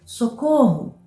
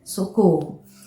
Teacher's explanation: você vai perceber que eu pronunciei de maneira mais prolongada a sílaba cor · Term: sílaba tônica